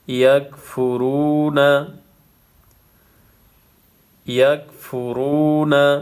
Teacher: کانو بأنہم کانو یکفرون، یکفرون، یا کاف زبر یک، فا پیش فو، یکفو، را واو پیش رو، یکفرو، نون زبر نا، یکفرون، یکفرون، واو ساکن پہلے پیش ہے، واو مدہ ہے، اس کو 1 الف کی مقدار کھینچنا ہے۔